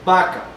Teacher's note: Así que en este momento vaca es con la B, digámoslo así, la oclusiva bilabial sonora es al inicio, es oclusiva. Vaca tiene una instrucción completa porque es al inicio de enunciado.